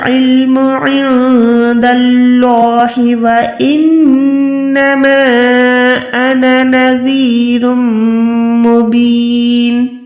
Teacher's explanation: 2 पेश के बाद मीम मुशद्दद है तब भी आपने यहाँ पर गुन्ना करना है, क्योंकि यहाँ पर इद्ग़ाम का कायदा हो रहा है।